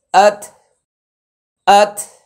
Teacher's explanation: দা তা তবে জানিয়ে দিচ্ছি তা এর উপরে যখন জজম হবে তার উচ্চারণের শেষ অংশে মানে শেষে একটু বাতাস হবে